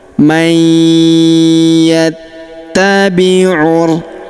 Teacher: Kita tahan dan kita dengungkan dua sampai 3 harakat. · maka nun sukunnya melebur ke huruf ya yang berharokat tasydid. Kita tahan dan kita dengungkan 2-3 harokat. · huruf ta kita tahan dan tekan karena terdapat tanda tasydid di atasnya